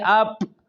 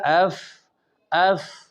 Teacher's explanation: مطلب اس صفت کا یہ ہے کہ آواز مخرج میں ایسے ضعف کے ساتھ ٹھہرے کہ آواز جاری رہے، تو لہذا رخوت کی وجہ سے فا میں آواز جاری رہے گی، جیسے اف اف۔